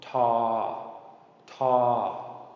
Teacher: T sound, but a long mid-tone